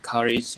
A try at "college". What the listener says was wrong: Okay, when you pronounce college, try to pronounce that L sound.